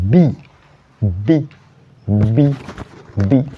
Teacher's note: when you pronounce that word your vocal cord vibrates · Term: voiced sound